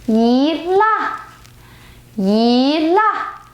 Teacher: I change the 一 to the second tone when it goes with the 4th tone. So basically, 一 changes every time when it comes with different tones of Chinese after.